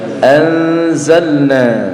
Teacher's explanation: nun sukun bertemu huruf zai, maka cara membacanya dibaca samar dan mendengung.